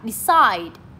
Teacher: Decide cũng là lên giọng ở âm số 2 luôn